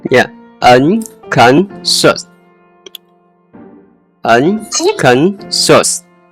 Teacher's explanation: The ending should sound like shoes, with a sh sound, not a hard S or Z.